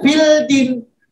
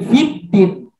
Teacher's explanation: Jadi tidak fildin tapi fiddin. Dia langsung masuk ke huruf dal. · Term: alif lam syamsiyah